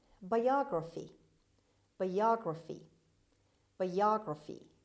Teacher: as you see the stress is on the second syllable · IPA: /baɪˈɑːɡrəfi/